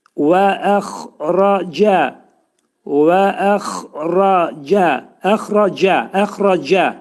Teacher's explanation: Cə cə hərfini dedikdə cə yox, bizim c şəklində yox və yumşaq şəkildə